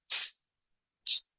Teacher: lo que hacemos es soplar aire hacia afuera y hacemos la T